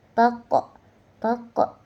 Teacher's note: qalqalah sugra e dipantulkan dengan sedang